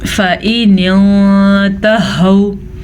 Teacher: نون ساکن کے بعد تا ہے جو کہ حروف اخفا میں سے ہے تو ہم یہاں پہ اخفا کا قاعدہ کریں گے